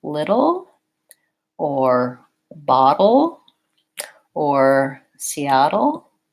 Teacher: in the case of syllabic l it tends to have a little bit of a hidden vowel sound